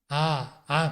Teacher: आ कहेंगे तो मुह फटता है गला खुलता है